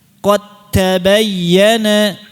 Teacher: cara bacanya antum ini hilangkan saja dalnya, seolah-olah hilang.